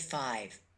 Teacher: the labio dentals using upper teeth and lower lip at the beginning and end of five